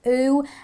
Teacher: when you do the oo sound, your lips are rounded, almost like as if you were blowing on a balloon, and your tongue is somewhere almost high near the roof of your mouth. So you do an oo and your lips necessarily have to go like this. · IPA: /u/